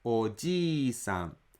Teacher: Ji is a long vowel, so you should extend another 1 mora to pronounce it.